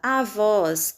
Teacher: sílaba mais forte, voz, som aberto, acento agudo.